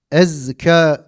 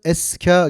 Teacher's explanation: Mesela zay harfinde biz nefesi akıtırsak ne olur? Bu harf o zaman sin harfine dönüşür. Ezka diyeceğimiz yerde nefis akıtarak okursak eska gibi olur.